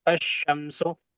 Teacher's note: इसके अंदर इदगाम हो गया अलिफ लाम का